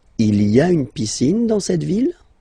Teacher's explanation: don't forget to raise your voice at the end because it's a question